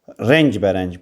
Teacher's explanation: Vurğu ilk hecəyə düşür.